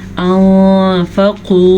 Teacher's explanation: انفقوا، نون ساکن کے بعد فا حروف اخفاء میں سے ہے تو نون ساکن کو ہم چھپے ہوئے غنے کے ساتھ پڑھیں گے